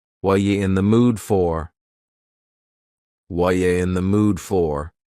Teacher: The word are is gone, and the word you has been reduced to ya. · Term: reduction